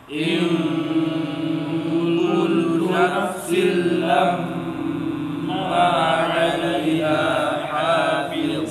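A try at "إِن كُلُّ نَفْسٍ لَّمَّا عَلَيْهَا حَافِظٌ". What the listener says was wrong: Selesaikan panjang ma baru ke ain. Pisahkan panjang ma dengan ain, dengan masuk.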